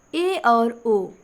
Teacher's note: तो अर्ध संवृत में आपका ए और ओ आएगा